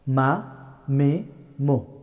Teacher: the letter of meme pronounced by closing two lips